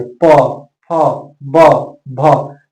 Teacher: जैसे ही प, फ, ब बोलेंगे तो आपका दोनों ओष्ठ आपस में सट रहा है और इसलिए इसका उच्चारण स्थान क्या हो गया, ओष्ठ हो गया।